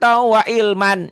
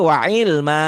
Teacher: Kalau berhenti, jika berhenti maka dua patah ini dibacanya satu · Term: mad iwad